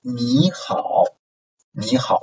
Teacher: if a third tone syllable is followed by another third tone syllable, so the first third tone syllable is changed into second tone syllable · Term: third tone Sandhi